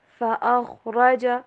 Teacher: خا کے اوپر آپ نے سٹریس نہیں دینا، ٹھیک ہے، کیونکہ یہاں پہ تشدید نہیں بلکہ جزم ہے